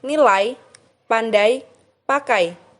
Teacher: kedua diucapkan dengan posisi di dah lebih tinggi dari yang pertama posisi lidah semakin naik sehingga strukturnya semakin tertutup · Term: diftong naik, diftong naik menutup maju